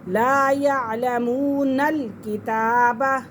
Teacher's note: آگے نون کو لام کے ساتھ ملائیں گے